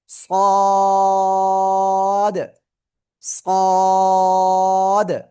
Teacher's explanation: জিহ্বার আগা, সামনের নিচে দুই দাঁতের পেট ও আগার সাথে লাগাবেন, লাগিয়ে আপনি এটা উচ্চারণ করবেন।